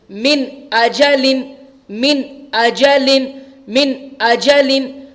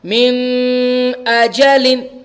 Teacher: نون ساکن کی آواز کو بالکل ظاہر کر کے جلدی سے بغیر غنہ کے پڑھیں گے. جیسے میم نون زیر من, حمزہ زبر آ, من آ, جیم زبر جا, لام دو زیر لن, اجلن, من اجلن, من اجلن, من اجلن. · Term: اظہار